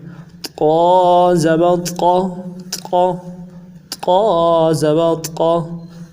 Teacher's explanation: گلے کے اندر سے جماؤ کے ساتھ ادا کریں گے اور زبان کا بیچ اٹھائیں گے موٹا کرنے کے لیے، پر پڑھنے کے لیے۔